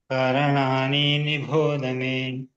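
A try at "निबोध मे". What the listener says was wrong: ಭೋ ಮಹಾಪ್ರಾಣ ಇಲ್ಲ ಅಲ್ಲಿ ಭಹಾಪ್ರಾಣ ಇಲ್ಲ ಧ ಮಹಾಪ್ರಾಣ ಇದೆ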